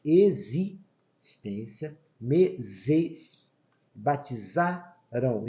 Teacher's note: esse X tem som de Z, esse S tem som de Z, e aqui o Z com o próprio som dele, de Z.